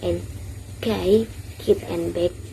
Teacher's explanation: block airflow with the back of the tongue against the soft palate velar